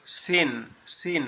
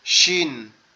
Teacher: সিন সিন সিন, নরম আওয়াজ। আর নোক্তাওয়ালাটা হচ্ছে শিন, মোটা আওয়াজ